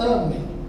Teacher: Amém, paroxítona, que a sílaba forte está lá na primeira.